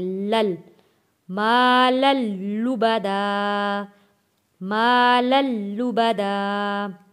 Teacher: یہ 2 زبر والی لام کو ہم نے تشدید والے لام کے ساتھ ملا کر پڑھنا ہے